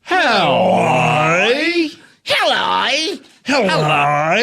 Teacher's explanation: it helps if you go really far down and then very, very, very high up